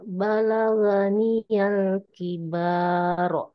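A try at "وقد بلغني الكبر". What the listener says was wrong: Awas, baknya di sana ada tanda panjang tidak? Nah, jangan dibaca panjang, Bu. Kalau yang ini tidak ada tanda panjang. Kalau Ibu mau dibaca panjang, seharusnya kayak gini tulisannya.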